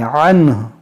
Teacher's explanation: जब रुकेंगे तो ये नून साकिन है, हा को भी साकिन कर देंगे